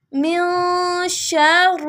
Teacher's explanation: نون کے اوپر جزم ہے، نون کو ناک میں پڑھیں گے